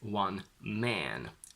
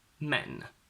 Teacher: For the singular, you would have to go quite nasal, something like one man, and the plural is men.